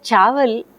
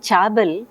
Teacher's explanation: the child instead of producing the fricative is stopping